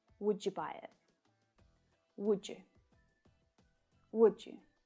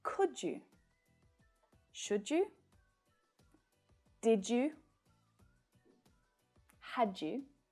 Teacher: There's also no j in you either, right? So the D at the end of the word would can link to the y at the start of you. But when we do this, it creates a new sound, the j sound.